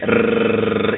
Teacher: And the reason why, these letters are so special is because they are they are from the tip of the tongue, you see, and we use them when we say rrr in Italian. That's the R, the letter R. It's rolled in Italian. And so it's the tip of the tongue.